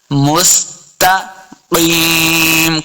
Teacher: مستقیم تا کو موٹا نہیں کریں گے. مستقیم قاف کو موٹا پڑھنا ہے. قاف حروف مستعلیہ سے ہے. قاف زی یا یا مدہ بھی ہے دو حرکات لمبا کریں گے.